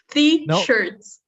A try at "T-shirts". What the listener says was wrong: You're still saying the. T-shirts.